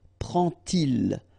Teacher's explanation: you won't pronounce it like d to make the liaison, but you will pronounce it like t.